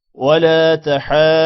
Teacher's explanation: مد کو 5 الف کے برابر لمبا کریں گے جبکہ واو مدہ ہے 1 الف کے برابر لمبا ہوگا اور ضاد کو موٹا پڑھیں گے